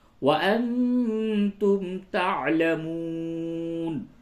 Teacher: نون ساکن کے بعد تا ہے، اس جگہ پہ آپ کو اخفا کرنا ہے